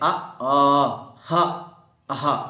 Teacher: ಕಂಟ್ಯಾಕ್ಷರಗಳು ಅಂತ ಹೇಳಿ ಕರೀತೀವಿ ಇದರ ಜೊತೆಗೆ ಇನ್ನೇನು ಬರುತ್ತವೆ ಅ ಆ ಹಃ ಇವೆಲ್ಲ ಏನಾಗ್ತವೆ ಕಂಠದಿಂದ ಉತ್ಪತ್ತಿ ಆಗ್ತಕ್ಕಂತ ಅಕ್ಷರಗಳಾಗಿದ್ದಾವೆ